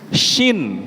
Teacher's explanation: maju tengah lidahnya naik.